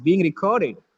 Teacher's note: Record is a verb. The second syllable is stressed.